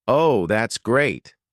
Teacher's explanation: Falling intonation to show sarcasm.